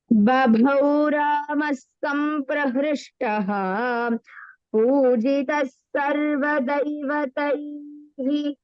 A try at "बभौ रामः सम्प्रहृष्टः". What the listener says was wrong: Bhabhau. The second Bha is Mahaprana. And then you have to say Ramas Samprahrishtah.